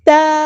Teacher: الف مد آیا تو مد اصلی کریں گے یعنی 2 حرکات کے برابر یہاں پہ لمبا کریں گے